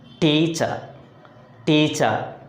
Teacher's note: The stress is placed on one of the syllables. Here the first syllable T takes the stress because here we are giving extra force to the first syllable.